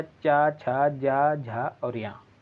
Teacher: तालु के माध्यम से जो वर्ण उच्चारित किए जाते हैं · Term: तालव्य व्यंजन